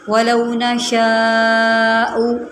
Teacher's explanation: میں نے یہاں پر لمبا کیا کیونکہ یہاں پر مد متصل لگ رہی ہے